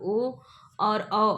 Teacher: कंठ द्वारा जीभ और ओठों के कुछ स्पर्श से बोले जाने वाले वर्ण होते हैं, कंठोष्ठ कहलाते हैं।